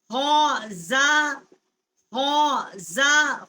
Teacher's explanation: خا جو ہے حروف حلقی ہے، ادنائے حلق جو ہے جو منہ کی طرف والا حصہ ہے حلقہ، وہاں سے اس کا مخرج ہے خا کا